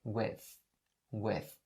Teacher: with ends with the th sound and in this particular situation is the voiceless th sound and in order to pronounce it all you have to do is to stick your tongue out a little bit like this right and say with with so let me say